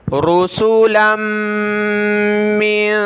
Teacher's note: میم کو نون کے ساتھ، یہاں ہم نے ناک میں آواز پیدا کرنی ہے۔